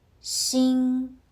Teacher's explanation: 新 uses the first tone. Your voice stays high and level. 新. Not rising.